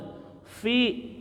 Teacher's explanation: bibir bawah menyentuh gigi atas, mengeluarkan angin